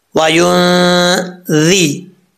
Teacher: وَيُنذِرَ، یہاں نون جو ہے ساکن ہے، نون ساکن کے بعد ذال آ رہا ہے حروف اخفا میں سے، تو یہاں پر 1 الف کی مقدار غنہ ہوگا نون ساکن کا اخفا. ذال بغیر سیٹی کے پڑھا جائے گا، اس کا مخرج ہے زبان کا سیدھا اوپر والے دانتوں کے کنارے، اندرونی کنارے سے لگے تو ذال پڑھا جاتا ہے.